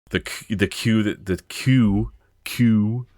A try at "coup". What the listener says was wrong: Coup. You sound like Q. they're queuing? No, coup. A coup.